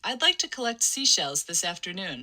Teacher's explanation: her F0 kind of goes to its maximum peak on the word like, and I don't know, that's maybe like 350 hertz or something like that.